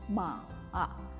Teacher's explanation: nada ketiga adalah nada yang turun kemudian naik kembali